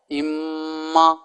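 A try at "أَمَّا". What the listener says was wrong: نہیں، جھٹکا بھی نہیں اور ہا بھی نہیں، اما.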